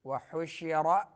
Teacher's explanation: ہا درمیان حلق سے شین میں تفشی آواز پھیلتی ہے منہ کے اندر